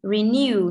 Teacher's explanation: Occur, trọng âm sẽ rơi vào occur. And renew, trọng âm sẽ rơi vào new.